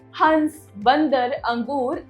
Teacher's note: जो ध्वनि निकल रही है वह आपके नाक से भी निकल रही है यानी कि व आपके नाक पर भी इंपैक्ट डालती है अनुनासिक